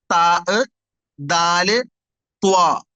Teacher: നാവിന്റെ തുമ്പ് എവിടെ എത്തണം? മുകളിലത്തെ പല്ലിന്റെ ബാക്ക്. പല്ലിന്റെ ഫ്രണ്ട് സൈഡ് നമ്മൾ കാണുന്നത്, അതിന്റെ ബാക്ക് സൈഡ്.